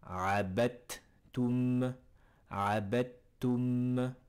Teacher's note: Au lieu de dire abed, au lieu de dire le D, on effacera le D, on va le manger, et on passera directement sur les 2 T. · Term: un idrom